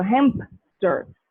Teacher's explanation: for a word like hamster they will insert something like a p sound between ma and sir so hemp stir this was not there